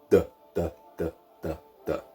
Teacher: the Irish D is almost like the English one, but you pronounce it with your tongue coming off of your front teeth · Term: broad D